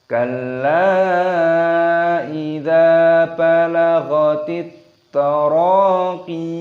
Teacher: Di sini lamnya ini berharokat tasdid, maka kita idghamkan, kita masukkan, kita tekan kalla. Kalla dalamnya di sini dipanjangkan 5 ketukan karena mad jaiz munfasil. Kalla idza, dalnya di sini panjangkan 2 ketukan saja, mad tabi'i, ada tanda alifnya.